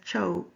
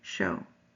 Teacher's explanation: One is that he substitutes ch and sh. Canelo says cho instead of show.